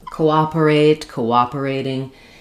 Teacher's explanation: Um, and then when we add the CO, we have the true vowel here, but I'm going from a rounded vowel to an unrounded vowel. So, I have to use vowel to vowel linking where it ends up as I go o, I end up with a w sound. · So the stress is on the op syllable just like in the word operate.